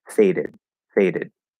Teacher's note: d in fade is is tapped it's flat right faded faded so it sounds exactly like did but with a flapped d at the start